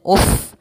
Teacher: ada Fa mati sukun harus dialirkan nafasnya